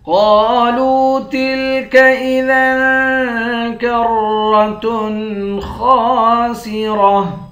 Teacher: گولتا پر جب وقف کرتے ہیں گولتا ہاں بن جاتی ہے